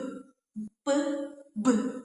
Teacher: Bunyi flosif ini adalah bunyi yang dihasilkan karena udara itu dia dihambat sepenuhnya pada rongga mulut lalu dilepaskan secara tiba-tiba sehingga timbullah bunyi letupan